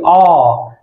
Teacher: अ हमारे कंठ से निकलता है, आ हमारे कंठ से निकलता है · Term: कंठय वर्ण